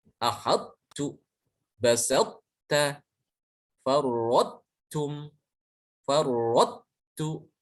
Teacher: Jadi prakteknya ketika mengucapkan huruf to tapi tidak jadi, yang keluar adalah huruf ta. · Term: idghamnya naqis